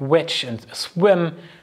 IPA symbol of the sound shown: w